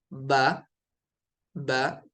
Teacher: یہ جو اوپر والا ہونٹ نیچے والے ہونٹ سے بس ملتا ہے، با، با، دیکھیں اس طرح سے۔